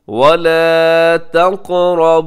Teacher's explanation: क़ाफ़ कलकला भी होगा, क़ाफ़ मोटा भी होता है। उसके बाद जो रा है, रा भी मोटा पड़ा जाएगा क्योंकि रा की ऊपर हरकत है और इसकी इसी तरह इस लफ्ज़ के आखिर में नून मुशद्दद है, वहाँ पे गुन्ना भी कीजिएगा।